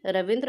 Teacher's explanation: रवि में ह्रस्व ई है और रविंद्र में दीर्घ ई में बदल गया